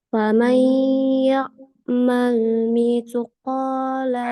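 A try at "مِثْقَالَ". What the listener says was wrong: Nah, ini miss jangan dipantulkan. Mithqala.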